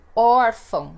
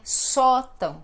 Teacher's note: elas são paroxítonas, ou seja, são aquelas que têm a penúltima sílaba mais forte.